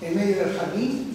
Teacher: la E, que está en posición inicial absoluta del grupo fónico, y va seguida de nasal, se realiza como una nasalizada